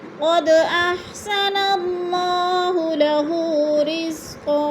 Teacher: 2 زبر تنوین کو وقف کی صورت میں 1 زبر میں بدل کر پڑھیں گے